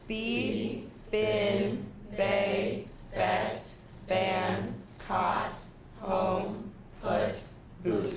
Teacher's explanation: as you were saying these words your tongue was moving from the front of your mouth towards the back of your mouth